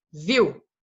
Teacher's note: Mesma coisa no viu, também. O I é mais forte. E o U, como mais fraco, vai representar o som de semivogal.